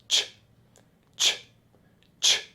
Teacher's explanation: the CH is just one strong puff of air, then it stops.